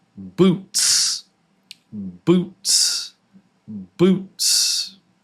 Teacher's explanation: It's the snake sound. Boots. Boots. Yeah, no no vibration.